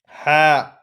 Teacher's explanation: হা থেকে উচ্চারণ হয় আমরা জানি কণ্ঠনালীর মাঝখান থেকে।